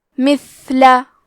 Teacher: ثا کی ادائیگی زبان کے سر اور اوپر کے دانتوں کے اندرونی کناروں سے ہے. یہاں کیونکہ ثا ساکن ہے، تو ہمیں ثا کو ہمزے سے پڑھنا ہے.